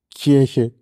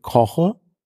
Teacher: das erste K wird wie ich gesprochen, weil danach ein eher geschlossener Vokal kommt. Ne? Und es wird wie k besprochen, k, wenn danach ein eher offener Vokal kommt.